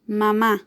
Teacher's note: Una palabra que su acento está en la última sílaba también y que termina en una vocal, A, por lo cual lleva tilde también.